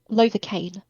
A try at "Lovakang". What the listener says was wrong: Kang. I will never say Lovacaine. makes it sound like you can't pronounce your G's.